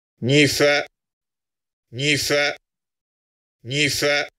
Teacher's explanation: You have tone on the final syllable, but when the final syllable is has more sonority than the penult, in this situation, the final syllable will be stronger, more long, and more intense